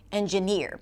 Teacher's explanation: in the word engineer the primary stress is on the final syllable engineer.